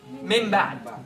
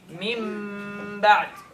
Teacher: your lips goes to the position of the ba and you maintain the ghunna of the mim. It just so happened to be that the same exit of the ba is the same exit of the mim. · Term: hidden